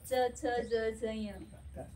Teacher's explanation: हे तालूला चिकटून, जीभ तालूला चिकटते. तर हे च छ ज झ य.